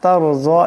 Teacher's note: ফাতারযা তারযা, এখানে রা সেকেন্ড ডানে জবর, তাই রাকেও মোটা করিয়া পড়বেন, জদকেও মোটা করিয়া পড়বেন।